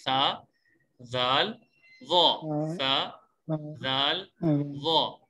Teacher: اس میں زبان کی نوک جب اوپر والے 2 دانتوں کے سرے سے لگے تو اس وقت سا, زال, ضا ادا ہوتا ہے. یعنی اس کا مطلب یہ ہے کہ زبان کی نوک ہو اور اوپر والے دانتوں کا کنارہ ہو تو اس سے یہ سا, زال, ضا ادا ہوتے ہیں. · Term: نرم حروف